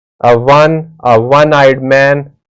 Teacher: because 1 begins with the consonant sound of W